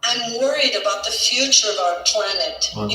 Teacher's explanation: A pronúncia que ela fez ali na quarta linha, na última palavra, about. Reparem que ela não marcou o T.